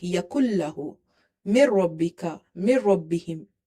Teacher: No, just merging is there, no nasalization is there.